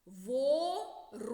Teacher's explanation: ворона другий склад наголошений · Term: наголошений склад